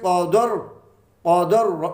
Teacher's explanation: یہ دال پہ زبر ہونے کی وجہ سے ہم اس ساکن را کو موٹا پڑھیں گے، اسے بریک نہیں پڑھ سکیں گے۔ یہ قانون اور قاعدے کے خلاف ہے اگر بریک پڑھا گیا۔